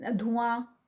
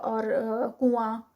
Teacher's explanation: ہم نون کو پراپر بولتے نہیں ہیں، بلکہ اس کو ہائڈ کر لیتے ہیں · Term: اخفا